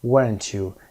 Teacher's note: و میگه weren't you عکسش میکنه و صدا هم به سمت پایین افت داره. Falling intonation داریم اینجا.